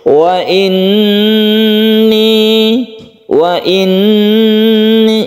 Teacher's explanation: Jadi nun yang bertasydid ini kita gunakan. Cara membacanya itu kita tahan ketika membaca tasydid nun tersebut. Wa inni itu kita tahan yang membacanya. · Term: gunnah musyaddadah